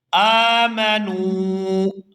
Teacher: آگے واو ساکن ہے اور اس سے پہلے پیش ہے تو یہ واو مدہ ہے اور اس کو بھی کھینچ کر ادا کریں گے